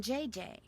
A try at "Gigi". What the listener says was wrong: Gigi. En français, you pronounce G like J and J like G.